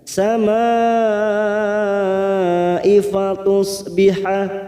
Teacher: Mad yang bertemu dengan Hamzah dalam satu kalimat mad wajib muttasil empat harakat kita panjangkan